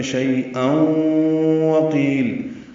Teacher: او میں ادغام ناقص ہے، غنہ ہوگا. وقیل میں قاف پر ہے، قی یا مدہ ہے.